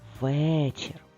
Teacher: в другому складі в слові вечір наголос в першому складі але ми дуже чітко під наголосом чуємо звук е